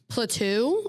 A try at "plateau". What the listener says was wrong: You're putting like a French accent on it. Like a chateau.